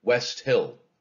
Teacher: West Hill. Those two syllables are equally stressed. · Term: spondy, spondee